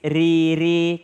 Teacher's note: Ada ra baris kasra. Ra baris kasra maka tipis.